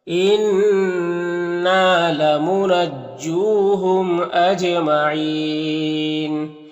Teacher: انّا نون مشدد غنہ ہوگا، الف مدہ ہے، ایک الف کے برابر کھینچیں گے ، یہاں پر واو مدہ ہے اور میم میں اظہار شفوی